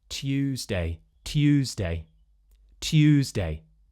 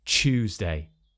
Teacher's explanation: What we're more likely to hear now, instead of Tuesday, is Chewsday. So we're replacing this t, y, t, and we're turning it into a ch sound, like in choose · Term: Yod Coalescence